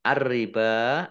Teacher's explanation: Ar-riba, alif lamnya alif lam syamsiyah karena tidak dibaca, langsung masuk ke huruf berikutnya yaitu ro, ditandai ro-nya ada tasdidnya, ro-nya dibaca double. Ba fathah berdiri, mat tobi'i.